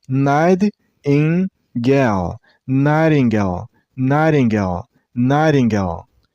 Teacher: And remember, while you pronounce the first syllable, I mean a night, don't make T sound. It's a little bit D sound. The T becomes D sound. So it's not night.